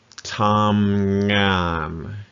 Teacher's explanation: Flat tone, both sides of that word.